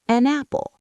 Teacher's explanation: Instead of stopping between the words, the consonant jumps over to the vowel. · The N attaches to the a. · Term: Linking